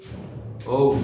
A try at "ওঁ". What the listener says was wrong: ওম, এরকম একটা লম্বা টান, ওম, অং তৎ সত, এর উচ্চারণটা হলো অং তৎ সত।